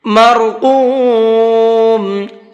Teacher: را کو پر کر کے پڑھیں گے اور قاف کو بھی پر کر کے پڑھیں گے